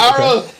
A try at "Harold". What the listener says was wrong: You don't pronounce the H, man.